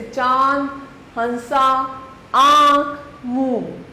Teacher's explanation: इसका उच्चारण अनुस्वार की अपेक्षा सरल होता है। इसका उच्चारण करते समय हवा नाक और मुंह दोनों से निकलती है। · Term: अनुनासिक